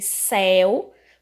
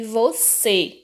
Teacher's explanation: diferença entre céu um som aberto e você um som fechado